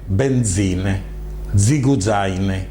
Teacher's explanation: la Z, che è dental africade sonor